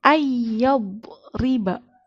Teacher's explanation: Nah, jadi nunnya itu dilewati, langsung masuk ke huruf ya. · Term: idgham